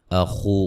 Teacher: خا کو موٹا و مدہ ہے